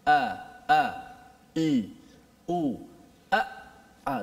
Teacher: Dia tertahan. Suara kita bila menyebut hamzah tu dia tertahan.